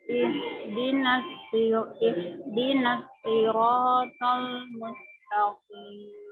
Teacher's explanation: Ujung lidah kita ditempelkan ke dinding gigi seri bawah kita ini. Ditekan, jadi ada suara desisnya Bu, suara desisnya. Tebal, karena shad ini huruf tebal. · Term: suara tajam